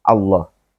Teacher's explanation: aslinya tipis lam itu ya jadi ketika fathah dibacanya ala tetapi pada lafal Allah ini huruf lam juga maka dibaca dengan tebal